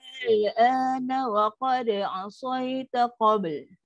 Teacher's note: Buat 6 dulu untuk hamzah, naikkan lidah untuk lam mati.